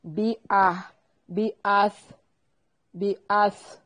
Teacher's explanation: با کو باریک پڑھنا ہے، حمزہ کو تحقیق سے پڑھیں گے